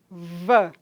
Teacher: o lábio inferior, toca nos dentes incisivos superiores, não é? E aí há uma fricção na passagem desse ar. V, não é? É vozeado.